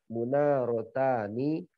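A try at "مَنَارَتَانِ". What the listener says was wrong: Mana bukan mu. Manarotani.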